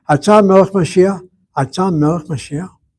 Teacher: Same three words, but the intonation of my mouth. The second phrase is a question.